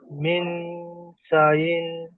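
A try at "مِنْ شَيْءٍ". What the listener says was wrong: শাই, শাইইন শিনিয়া যাবার শাই হয়, মিন শাইইন।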